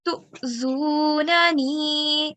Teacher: This is Hamza Sakin. So we will do a slight jerk.